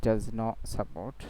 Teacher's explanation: এখানে টিকে কি করে দেওয়া হয়েছে গ্লোটাল স্টপ করে দেওয়া হয়েছে ডাজ নট ছিল এখন টিকে ফেলে টিকে গ্লোটালাইজেশন করা হয়েছে এখানে টিকে গ্লোটাল পড়া হয়েছে ডাজ নট অর্থাৎ টি উচ্চারণ করতে গিয়ে আবার ফিরে এসেছে এটাকে বলা হয় গ্লোটাল স্টপ